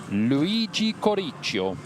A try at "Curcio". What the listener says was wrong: Poor Luigi, I think he just added a syllable there. I think it's Curcio. No, just Curcio, I believe.